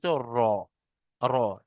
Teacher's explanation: ন দেখেন জিবটা উপরে লাগছে তালুর সাথে আইন 10 নাম্বার মাখরাজ জীবের আগার উল্টো পিঠ এবং তার বরাবর উপরের তালুর সাথে